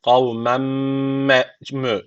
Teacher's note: tenvinden sonra mim geldiği için idgamı me gune var. Guneli bir şekilde bağlıyoruz